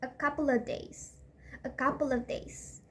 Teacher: the off is reduced